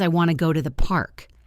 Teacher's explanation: The words want and to become wanna. The words go and to blend together. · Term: connected speech